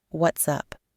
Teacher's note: practiced the glottal stop between what's and up making it sound like one fluid word